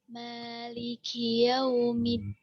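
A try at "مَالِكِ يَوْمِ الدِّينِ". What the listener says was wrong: Ini nunnya sering masih hilang-hilangan Ustazah.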